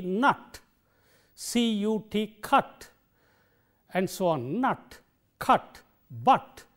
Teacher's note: It's short but open, ah, as we have in the word N-U-T, nut, C-U-T, cut, and so on, nut, cut, but, and so on. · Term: short vowel